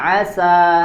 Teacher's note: huruf sin juga sifat hurufnya adalah infitah, ya, dibaca dengan tipis, suaranya tidak dibaca tebal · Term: sifat infitah